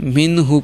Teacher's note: اس لیے منہ پڑھتے ہیں، اسے پڑھ رہے ہیں اور گنہ نہیں، یعنی ناک میں آواز نہیں ہم جانے دے رہے